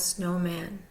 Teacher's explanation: That's why we see the numerical notation of 1, 2 over snowman. The first syllable, snow, is primary. The second syllable, man, is secondary.